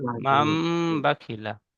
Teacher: মিম নুন জাবার মান ছিল, কিন্তু এই নুন সাকিনের পরে বা আসার কারণে নুনটি পরিবর্তন করে মিমের সাথে মিলিয়ে পড়তে হবে। মিম মিম জাবার মাম, বা জাবার বা, খজের খি বাখি, লাম জাবার লা, মাম বাখিলা।